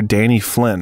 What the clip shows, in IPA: flɪn